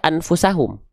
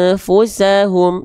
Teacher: Ikhfa itu atau ikhfa hakiki nama lengkapnya, artinya menyamar dengungkan bunyian kepada bunyi fa.